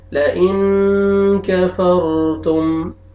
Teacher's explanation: لام زبر لا, حمزہ زیر نون جزم ان لئن, کاف زبر کا لئن کا, فا زبر را جزم فر لئن کفر, تا پیش میم جزم تم لئن کفرتم. اخفا نون ساکن کے بعد کاف آ رہا ہے, اخفا کریں گے, را کو آپ نے پر کرنا ہے, را سے پہلے زبر آ رہا ہے لئن کفرتم.